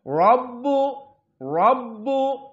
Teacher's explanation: Kebetulan di sini rabbu tafkhim, kenapa? Dalam keadaan fathah.